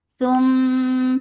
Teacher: Tum for the circle ellipse attached with mim will get sifa of kunna. This kunna is akmal, so keep the sound in your nose for a longer time.